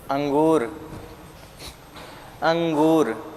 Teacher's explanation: तो जब अंक बोलेंगे तो नाक से ध्वनि अधिक निकलेगी और मुख से कम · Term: अनुस्वार